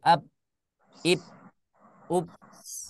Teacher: Nah, itu kalau ditambah dengan sifat lainnya, yaitu sifat qalqalah. Ya, kalau dia tidak digunakan sifat qalqalahnya, misalkan, maka suaranya akan berhenti seperti ab, ib, ub